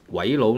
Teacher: it's GW 呱, right? And then you have I, a very short I sound, and then you have a rising tone.